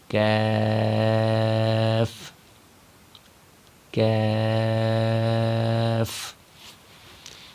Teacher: کاف کا مخرج قاف کے مخرج کے ساتھ ہی ہے، یعنی زبان کی جڑ اور تالو کے سخت حصے سے کاف کو ادا کیا جائے گا